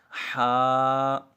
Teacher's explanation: یہ ہا وسط حلق، یعنی حلق کے درمیان والے حصے سے ادا ہوگا۔ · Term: حروف حلقیہ